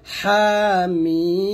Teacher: হা এক লিফ টান, মিমে 4 টান দিবেন